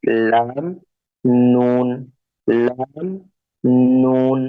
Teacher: और लाम और नून की अदायगी इस तरह होगी कि जुबान के अगले हिस्से को यानी जुबान के टिप को हम ऊपर के दोनों दांतों आगे वाले जो दांत है उनके पीछे हम टच करेंगे